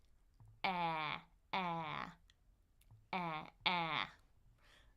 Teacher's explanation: Even though it kind of looks like two vowels together, it's only one sound. So, I'm going to open my jaw as much as possible. My tongue is going to go in the front.